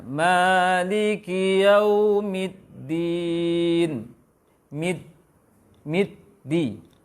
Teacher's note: Harus ada durasi pengucapan, harus ada waktu untuk mengucapkan dal tasdid. Ini tasdid belum baca kasrohnya ya.